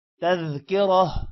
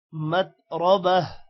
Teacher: تا کی جگہ ہا پڑا جائے گا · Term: وقف